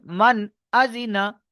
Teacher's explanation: তাহলে এখানে এই নুন সাকিনের আওয়াজকে, এই এই নুন সাকিনের আওয়াজকে বিনা গুণায় তাড়াতাড়ি পড়তে হবে। বিনা গুণায় এই আওয়াজটাকে জাহির করে বিনা গুণায় তাড়াতাড়ি পড়তে হবে।